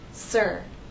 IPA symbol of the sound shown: ɚ